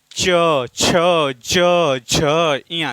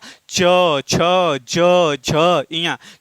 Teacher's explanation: तो च वर्ग का उच्चारण तालव्य से होता है। तालव्य का अर्थ है कि जीभ के बीच वाला जो भाग है वह ऊपर के हिस्से से टकरा यानी ऊपर छत से टकराता है।